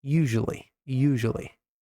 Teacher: Apesar de escrever com o s, usually, é como se eu falasse com o som de J.